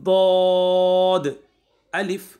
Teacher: ज़बान की करवट और ऊपर की दाढ़ों की जड़ से अदा होता है। ज़बान की जो साइड की करवटें होती है, यहाँ से ऊपर की जो दाढ़ें हैं वहाँ से ही अदा होता है।